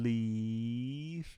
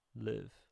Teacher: Leave is a little bit farther forward than live. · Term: tense